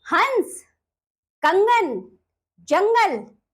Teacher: यह अनुस्वार है। इसका उच्चारण नाक से किया जाता है